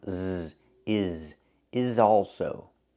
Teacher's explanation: First we change the S in is to a zebra sound.